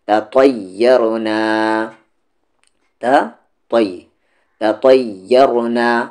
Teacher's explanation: پہلا تا لائٹ ہے اور دوسرا والا تا ہیوی ہے